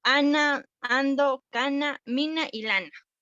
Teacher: Por otro lado tenemos que en la Ciudad de México, de Buenos Aires y de Madrid, la N es alveolar, que son fonemas cuyo punto de articulación se produce en la unión de la lengua con la región alveolar